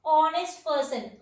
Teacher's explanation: Here the starting letter H is silent.